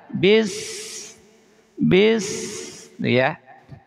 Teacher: Rahwah ini suara berjalan. Maka ketika mengucapkan sin itu tidak boleh syiddah. Syiddah itu langsung nahan.